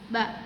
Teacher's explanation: Syafawi adanya di bibir, infijari itu adanya udara yang keluar sedikit, majhur itu tidak bergetar, merokok tipis.